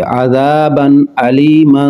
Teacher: با پر نون تنوین ہے، اس کے بعد حمزہ حروف حلقی ہے تو اظہار کر کے پڑھیں گے۔